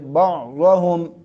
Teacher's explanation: اور ضا کو پر کر کے منہ کو گول کر کے پڑھیں گے